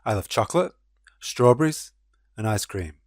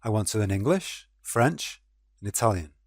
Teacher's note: Items on a list use a rising intonation until the final item, which uses a falling intonation.